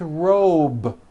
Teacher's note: robe also has a voiced B ending